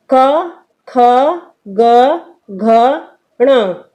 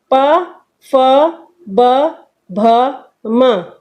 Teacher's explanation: स्पर्श व्यंजन ये इसलिए कहलाते हैं क्योंकि क से लेकर म तक के वर्ण मुख के प्रत्येक भाग को स्पर्श करते हैं